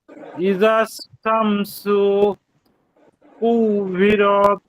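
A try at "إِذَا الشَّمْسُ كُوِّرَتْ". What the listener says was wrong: এই যে এই শিনটা একটু কম হচ্ছে, সানা শা, ইজাশ। হ্যাঁ, এখানে শিন দুইটা, তো প্রথমটা ইজাশ ঠিক আছে, পরেরটা আবার শা হচ্ছে না, শা বলতে হবে। ইজাশ শামসু।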